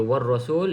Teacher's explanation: lam kosong, tak perlu baca, masuk dalam huruf ra bersabdu